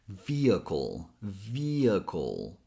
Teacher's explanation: a dark L sound, which is that L sound, you put a little bit more pressure in the back of your tongue.